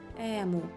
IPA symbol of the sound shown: е